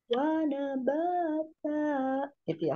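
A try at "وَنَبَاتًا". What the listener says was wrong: Wa nabata. Kurang turun. Wa nabata.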